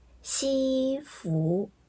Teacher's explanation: 西服，分别是一声、二声